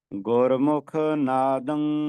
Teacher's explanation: ਸਰਬਤ ਗੁਰਸਿੱਖ ਪਿਆਰੇ ਇਸਦਾ ਉਚਾਰਨ ਸਮਝ ਲੋ ਜਦੋਂ ਟਿੱਪੀ ਬੋਲਣੀਹ ਤਾਂ ਨੱਕ ਦੇ ਵਿੱਚੋਂ ਆਵਾਜ਼ ਆਉਣੀ ਹੈ ਜਿਵੇਂ ਆਪਾਂ ਨੱਕ ਚ ਆਵਾਜ਼ ਕੱਢਣੀ ਹੋਵੇ ਮੂੰਹ ਬੰਦ ਕਰਕੇ